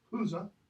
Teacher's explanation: initially that final E is pronounced, but it's just schwa